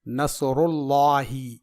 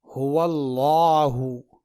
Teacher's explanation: یہاں دیکھیے، لفظ اللہ آ گیا اور اس سے پہلے زبر یعنی فتحہ ہے، تو لفظ اللہ سے پہلے اگر زبر ہو تو لفظ اللہ کے لام کو پر یعنی موٹا پڑھیں گے، جیسے هو اللہ۔ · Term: موٹا لام